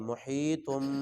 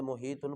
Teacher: چھوٹا میم بھی پڑھیں گے اور اس کو غنہ بھی کریں گے جی، کوئی بندے محیطن پڑھ دیتے ہیں، حالانکہ چھوٹا میم ہے اس کو پڑھنا ہے ساتھ جی۔